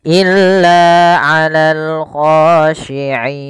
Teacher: kita boleh memanjangkan 2 harokat, boleh pula 4 harokat, dan boleh pula 6 harokat. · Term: mad arid lis-sukun